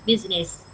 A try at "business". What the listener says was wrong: Thì nhìn thì tưởng là 3 âm tiết nhưng thực tế nó chỉ có 2 âm tiết hả? Business, chữ z, không có chữ business. Y nha. Business.